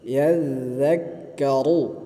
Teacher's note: ইয়াজ্জাক্কা, ইয়া যাল জবর ইয়াজ, ইয়া যাল জবর ইয়াজ, যাল কাফ জবর যাক ইয়াজ্জাক, কাফ জবর কা ইয়াজ্জাক্কা, র পেশ রু ইয়াজ্জাক্কারু, রয় পেশ আছে, রকে মোটা করে উচ্চারণ করতে হবে